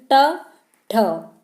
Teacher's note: मूर्धा में हमारी जो जीभ है वो मुड़ जाती है